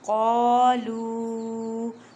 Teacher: شیاطینہم میم ساکن کے بعد قوف ہے، یہاں پہ اظہار شفوی وقت کا قاعدہ کریں۔ قالو قوف کو ادا کرتے وقت خیال رکھیں کہ کاف کی آواز نہ آئے، یہاں پہ چھوٹی مد ہے اور واو مدہ کا قاعدہ کریں۔